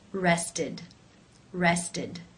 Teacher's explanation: the e d is pronounced as the I as in sit with the D sound